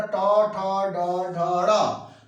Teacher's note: ट ठ ड ढ ड़, यानी जीभ क्या हो रही है, मुड़ जा रही है, सीधे सीधे जीभ मुड़ जा रही है। तो जब जीभ मुड़ जाएगी तो उस आधार पे, जब जीभ मुड़ने की कला है उसको मूर्धा कहते हैं, और उसी के नाम पर यहाँ पर इसका नाम पड़ा मूर्धन्य।